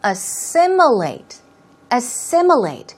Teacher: Stress goes right there on the second syllable, so it's assimilate.